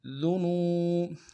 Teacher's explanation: الف مدہ ہے، ایک اعتدال میں کھینچیں گے، فاغفر لنا ذنوبنا، ذال کو باریک ادا کریں گے، نون کو واو کے ساتھ ملانا ہے، واو مدہ ایک اعتدال میں کھینچیں گے